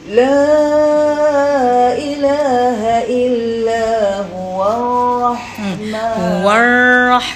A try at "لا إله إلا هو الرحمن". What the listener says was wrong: kan masa kena tekan Rahman sebab ra musyaddadah kan Rahmanur Rahim kan ra kan Rahmanur Rahim